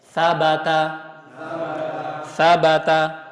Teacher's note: ujung lidah itu bertemu dengan bagian ujung gigi seri atas